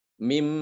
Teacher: Nunnya tidak ditempelkan lagi ujung lidahnya pada gusi, tidak. Tapi dia langsung masuk ke dalam huruf mim.